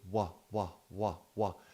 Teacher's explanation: the W is a voiced labiovelar approximant. Approximant means it gets close to, but it doesn't close. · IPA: /w/